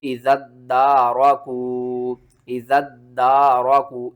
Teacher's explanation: تشدید آ رہی ہے تو ذال کو ہم نے دال کے ساتھ ملانا ہے، ٹھیک ہے نا، اور دال کو آگے الف کے ساتھ ملانا ہے.